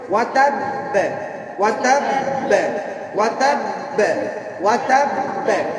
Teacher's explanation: যেমন এবার তাব্বাত ইয়াদা আবি লাহাবি ওয়া তাব ওয়া তাব ওয়া তাব বেনা ওয়া তাব মানে একের জেরে যাবে না, একের কোথায় যাবে না, জবরাও যাবে না, পেশও যাবে না, মাঝামাঝি থাকবে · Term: কলকলা